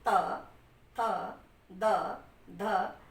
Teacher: ये बोलने से ही आपकी जिह्वा जो है दांत को स्पर्श कर रही है, इसलिए इसका उच्चारण स्थान दंत है।